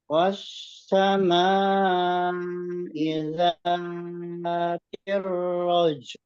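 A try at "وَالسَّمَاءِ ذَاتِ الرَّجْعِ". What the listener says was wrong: Itu kalau berhenti, ainnya itu masih ada ya. Wassama'i dzatir raja. Raja. Wassama'i dzatir raja.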